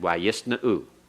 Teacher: the primary accent is still at the end.